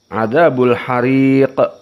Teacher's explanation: qof di sini disukunkan dalam keadaan Qalqalah